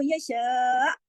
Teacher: आखिर में आपके गले में हमजा की आवाज आनी चाहिए